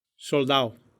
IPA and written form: sol̪ˈd̪a.o (soldado)